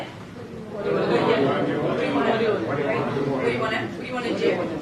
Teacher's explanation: People don't say want to. They say wanna, okay? Unless it's stressed.